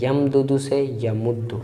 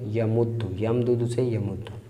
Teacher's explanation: اب یمدد تھا، دونوں متحرک ہے لیکن اس سے پہلے ساکن ہے میم، تو دال پہلے کی حرکت میم کو دی، پھر دال کا ادغام کر دیا